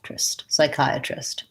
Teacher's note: at the end I have trist with the lax I vowel